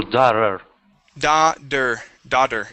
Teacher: so that t will turn to a D sound